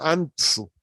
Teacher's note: An es la sílaba tónica. Tusu son átonas.